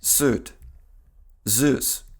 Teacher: После с и з звук йод выпадает в начале слов.